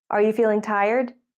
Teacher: You're asking a question to check something or to confirm that your idea is right. In this case, the question has a rising tone.